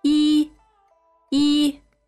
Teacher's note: when it's alone when it's independent it's first tone